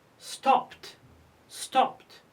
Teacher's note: P is voiceless, so we pronounce it stopped, stopped. Why we pronounce ed t? Because it's preceded by p.